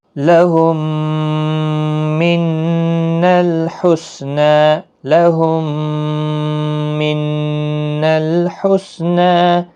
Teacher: میم ساکن کے بعد میم تو ادغام شفوی ہوگا، گنہ کے ساتھ پڑھیں گے